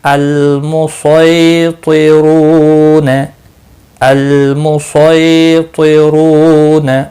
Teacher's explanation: स्वाद मुस्तालिया में से है इसलिए मोटा पढ़ना है।